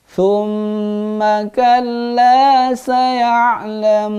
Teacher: ma-nya tidak panjang. Hanya gunnah doang.